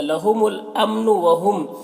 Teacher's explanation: میم ساکن کے بعد میم ہے تو میم کو میم سے ملا کر پڑھیں گے. اس کو ادغام شفوی کہتے ہیں غنہ کے ساتھ پڑھیں گے